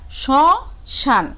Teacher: সামান্য নাসিক্য স্বর হয়, মানে নাকে বাজিয়ে বা চন্দ্রবিন্দু উচ্চারণ হবে